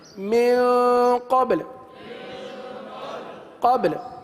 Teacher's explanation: با پر قلقلہ کریں اور لام کو ساکن کر دیں.